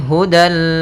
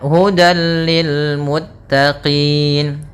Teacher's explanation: Langsung ke lam dan tidak ditahan. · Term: idgham bila ghunah